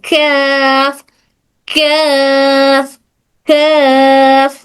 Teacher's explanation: ठीक है, हल्की सी वाइब्रेशन महसूस होती है। काफ बोलते वक्त जबान थोड़ा ऊपर उठती है जो साउंड को सॉफ्ट बना देती है,